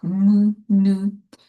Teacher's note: Elles peuvent également se définir par la résonance nasal.